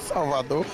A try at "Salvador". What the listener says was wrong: Não pronuncia esse R assim, de formação de Salvador, não. Salvador, pronto.